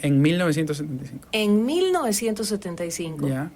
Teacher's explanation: El guayaquileño hace una N en la que la lengua no toca el paladar de arriba, hace así como en 1975, A ver, en 1975. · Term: nuestro tema con la N